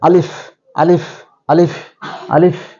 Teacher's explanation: আলিফটা উচ্চারণ হবে উপরে দুই দাঁত আর নিচের ঠোঁট বাতাস বেরিয়ে যাবে